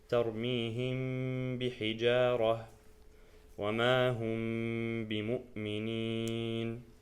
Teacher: The only letter for ikhfa is ba, and like ikhfa, you keep the ghunnah of the Meem while getting prepared to recite the ba. So because the Meem and the ba come from the same place, which is the lips, it's gonna be that's how the Arabs used to say it.